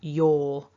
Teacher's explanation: Your, in my accent, would end with a vowel. But I need to activate it because I've got another vowel immediately afterwards.